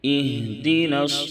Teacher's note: ہا کو نہایت نرمی کے ساتھ پڑھیں گے، ہا کی ادائیگی میں آواز اچانک سے رک نہیں جائے گی، ورنہ بڑی ہا کے مثل ہو جائے گا۔